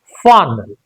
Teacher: The stress is on far sound. So we have to stress and make it louder.